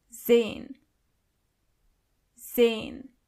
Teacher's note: the letter S is not pronounced as S, but more like Z.